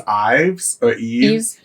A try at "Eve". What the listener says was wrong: I think it's Eve, just Eve. You don't pronounce the S.